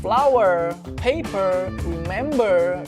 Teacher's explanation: Jelas di sini tuh bukan kayak jelas ala Indonesia yang R, tapi jelas ala bahasa Inggris yaitu R dibandingkan dengan British yang terdengar sedikit menghilang R-nya gitu ya. Dan pengucapan R yang jelas ini pada General American English itu disebut dengan istilah rhotic speech. Nah, kalau teman-teman pengen belajar American accent, teman-teman bisa mengucapkan R di akhir kata dengan jelas seperti flower, paper, remember, dan lain sebagainya.